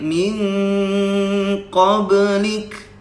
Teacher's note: Nah, ketika waqaf di situ, kaf itu punya sifat hams. Hams itu ada desis di antaranya.